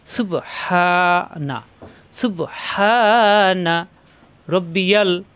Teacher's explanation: সুব সুব ধাক্কা, হা কণ্ঠনালীতে চাপ দিয়ে মাদের হরফ একালিপ টান।